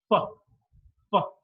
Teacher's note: When the air passes through, there is a lot of friction. So, fa is a voiceless labiodental fricative.